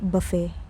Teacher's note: The T is completely silent.